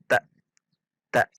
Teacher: tak kalau tak berarti tidak ada hamzahnya namun dibaca tak tak seperti terhentak pada makhroj Hamzah sukun